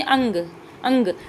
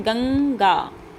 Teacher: आपके मुंह से ज्यादा नाक से आवाज निकलती हुई आपको फील होगी। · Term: अनुस्वार